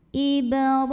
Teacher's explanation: huruf ra dibunyikan secara tafkhim karena ra-nya berbaris di atas, maka bacanya ditebalkan. Ra mad tabi'i muqaddar karena ada baris fathah tegak di atas huruf ra, maka ra-nya panjang 2 harokat.